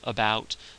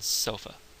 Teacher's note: it's an unstressed neutral vowel just in the middle of the mouth